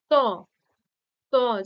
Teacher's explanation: এই সবগুলি উচ্চারণের সময় জীভের অগ্রভাগ দাঁতে কিংবা দন্ত মূলে স্পর্শ করছে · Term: দন্ত ধ্বনি